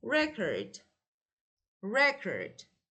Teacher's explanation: I pronounce the first part slower and louder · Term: stress